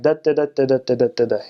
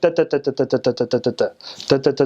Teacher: but in Armenian, every syllable is like equal length.